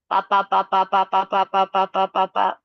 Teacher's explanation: if you do just the P without the aspiration you'll be able to do a lot of them